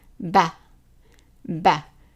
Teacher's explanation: the fatha is pronounced as a short A, as in the word sat